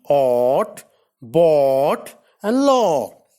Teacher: O is a back rounded vowel between half open and half close. O means long O can occur initially, medially, and finally in words as in ought, bought, and law, respectively.